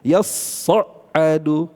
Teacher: Imam Hafz membaca yasadu ya ditasdidkan pada huruf shadnya. Karena ta dengan shad itu satu kesatuan yang saling berdekatan makhrajnya dan sifat. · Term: idgham